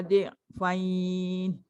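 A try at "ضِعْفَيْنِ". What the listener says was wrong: Dia jadi sengau, fain. Bukan fain tau. Dhi'fain.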